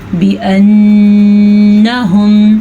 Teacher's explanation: نون کے اوپر آ گئی ہے شد, شد پہ ہوگا غنہ